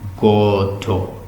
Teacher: we should pronounce it with the emphasis on the first syllable